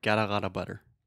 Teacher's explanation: the flap T so that is the sound that sounds more like a D